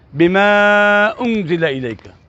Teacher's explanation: جب اس کے ساتھ میں انزلہ ملاؤں گا تو چونکہ یہاں پر حمزہ آ رہی ہے، اس حمزہ کی وجہ سے یہ 3 سیکنڈ لمبا ہو جائے گا، یہ مد منفصل بن جائے گی